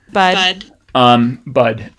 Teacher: kind of a low-mid uh central-ish vowel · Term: wedge